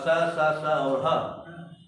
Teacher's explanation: स, स, स, ह का उच्चारण करने में जीभ स्पर्श नहीं करता, केवल श्वास घर्षण के साथ निकल जाता है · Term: ऊष्म व्यंजन